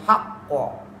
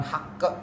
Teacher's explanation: Qaf itu isti'la, dia wakofnya hak, padahal qaf itu isti'la, harusnya haqqo bukan hak.